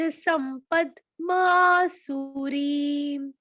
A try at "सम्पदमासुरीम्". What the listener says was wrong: संपद में द हलंत हो गया, संपद। सम